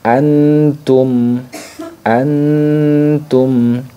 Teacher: jadi ketika membaca ikhfa ini maka Nun sukunnya lebih jelas jadi tidak terlalu samar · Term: ikhfa akrab